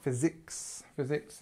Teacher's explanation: just remember that the stress is on the first part